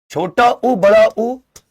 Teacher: छोटा उ बड़ा उ इनका उच्चारण ओठ से होता है